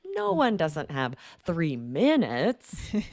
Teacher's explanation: we're going up on no one no one and then really down on minutes